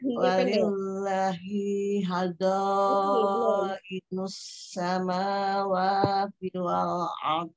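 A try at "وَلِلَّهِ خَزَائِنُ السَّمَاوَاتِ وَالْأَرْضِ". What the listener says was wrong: Walillah lainnya yang panjang bukan yang hinya. Ibu bacanya tadi walillahi, walillahi haza, walillahi haza inus samawat. Ya, jadi perhatikan lagi ya, di lafaz Allah itu sudah rumus. La-nya dua harakat, hi-nya satu ya. Walaupun tidak tertulis panjang, la-nya tetap dibaca dua harakat, hi-nya tidak. Walillahi khazainus samawat. Walillahi.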